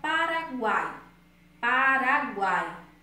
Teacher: O A e o I aí, ele tem o U é semivogal, o A é vogal e o I é semivogal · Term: tritongo